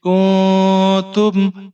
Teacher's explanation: کاف کے اوپر پیش ہے، نون ساکن ہے، اخفا کریں گے